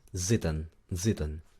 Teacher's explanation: La pronunciación importante es con una Z, no es si, es z. Y la I no es I, es E.